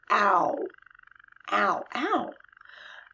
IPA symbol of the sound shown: æo